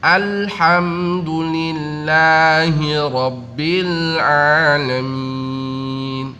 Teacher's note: Jadi ujung lidah kita menempel dengan langit-langit, karena la itu keluarnya di ujung lidah ketemu dengan langit-langit, yaitu huruf la. Ya, kalau enggak ditempelkan dengan sempurna maka akan menjadi memantul, jadinya seperti huruf-huruf qalqalah.